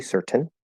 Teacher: in certain, like in mountain, you could push out the T